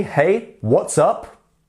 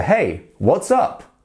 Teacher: make sure that you inflect up at the end so on the up that's when your voice is going to go up